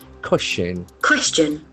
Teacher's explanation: The accent falls on the first syllable.